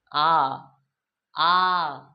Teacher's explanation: না আ দেখ আর জীবের চাইতে নিচে নামবে একেবারে নিচে বসেছে সব চাইতে নিচে অবস্থান করছে আমাদের জীবটা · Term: নিম্ন স্বর